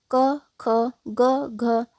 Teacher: अ आ का उच्चारण स्थान कंठ है और क ख ग घ इसका भी उच्चारण स्थान कंठ होगा